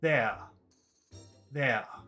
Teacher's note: And this becomes really important because in some types of English, in Australia, in the UK, they don't pronounce the R's, the final R, at the end of a word.